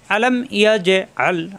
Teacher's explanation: ইয়া মিলবে জিমের সাথে, জিমে সাকিন কলকলা। আলাম ইয়াজে আল, আ কণ্ঠনালীতে চাপ দিয়ে আল পড়া যাবে না, আল পড়লে হামজা হয়ে যাবে।